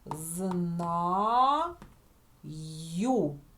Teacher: одна буква але ми чуємо одразу два звуки й у